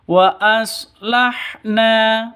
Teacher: Wa aslahna, na panjang dua ketukan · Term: mad asli